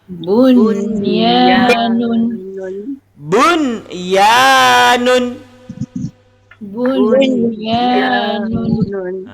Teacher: Jadi ketika kita sebut bunyanun, ada nun bertemu dengan ya. Nun mati bertemu dengan ya, tapi baca jelas. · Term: izhar mutlak